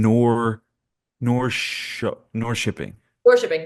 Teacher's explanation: Swedish does these weird things where K turn into like sh sounds every once in a while but not all the time